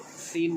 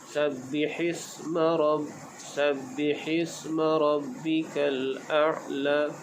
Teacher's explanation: Di dalam ayat ini kita berjumpa dengan sebutan huruf sin pada sabbihisma. Huruf sin bersifat dengan as-safir, yakni berdesir. Jadi kita sebut sin dengan desirkan bunyi seperti berangin.